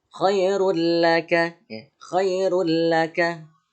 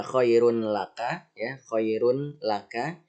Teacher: Karena tanwinnya dimasukkan ke dalam huruf la, maka tanwinnya hilang ya. Cuma hanya saja ini tidak ditahan selama 3 ketukan ya, tidak ditahan.